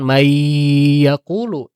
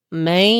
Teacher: Jadi ketika dibaca bukan may yaqulu tapi may. Nah, ciri-cirinya ketika dipencet hidung dia mengek suaranya gitu ya atau sengau · jasadnya dia dalam huruf ya, ruhnya ada dalam keadaan sengau ke hidung gitu. Jadi ketika dibaca bukan may yaqulu tapi may. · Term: naqis